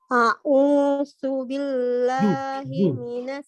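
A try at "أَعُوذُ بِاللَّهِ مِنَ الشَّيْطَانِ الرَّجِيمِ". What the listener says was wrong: Z, bukan set, bukan S, tapi zu, huruf Z. Tidak gigit lidah, jangan gigit lidah. Lidah huruf Z. A'udzu.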